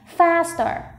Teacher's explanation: Trọng âm rơi vào âm đầu tiên, mình sẽ đọc to âm đầu tiên này